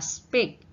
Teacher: kata speak P berada di tengah ini tidak aspirated